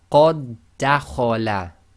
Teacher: because the two dals effectively come together when you do your recitation, we completely ignore the first dal. So it doesn't even have sukun. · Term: merging